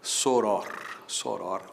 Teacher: Soror é a forma que mais se usa, paroxítona terminada em R, portanto acento nesse O inicial de soror, mas saiba que também é possível dizer soror, soror, oxítona sem acento